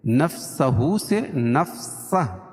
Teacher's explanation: الٹا پیش کو وقف کی حالت میں جزم سے بدل دیں گے، نفسہ سے نفسہ، یعنی ہائے ساکنہ ہو جائے گی۔